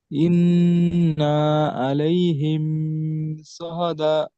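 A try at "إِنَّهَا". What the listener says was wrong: ইন্নাহা, ইন্না হবে না, ইন্নাহা, হা বলতে হবে।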